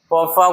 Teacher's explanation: प फ को कहिएगा प वर्ग और इसका उच्चारण हुआ ओष्ठ से।